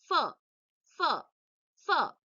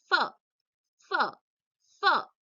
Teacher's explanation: upper teeth and lower lip